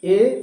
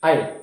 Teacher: जब ऐ बोलते हैं तो ऐ में आपका जबड़ा हल्का सा फैल जाता है। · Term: अर्ध विवृत